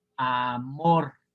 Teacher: vamos a ponerle la sílaba tónica en la última sílaba, aquí, amor.